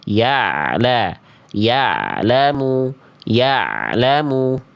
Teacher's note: Yang kedua sudah jadi ain tapi jangan sampai terputus. Intinya ain tidak jadi hamzah dan harus sedikit mengalir suaranya. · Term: ain sukun